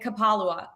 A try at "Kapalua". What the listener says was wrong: Kapalua. emphasis on the wrong syllable.